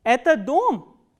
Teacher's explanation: So, what happens is you start from the medium pitch and it goes up on the word which contains the question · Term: third intonational construction